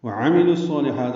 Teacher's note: عین جلدی پڑھیں گے، عین وسط حلق سے ادا کریں گے، میم بھی۔ لام کو الصالحات کے صاد سے ملانا ہے، ادغام شمسی۔